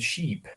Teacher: there was a change in cadence because i'm emphasizing that long vowel